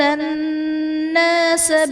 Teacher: الناس میں نون مشدد ہے، یہاں پر غنہ کر کے پڑھیں گے۔